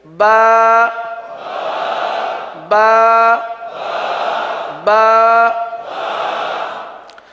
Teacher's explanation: با ہونٹوں کے، دونوں ہونٹوں کے تر حصے سے ادا ہوتا ہے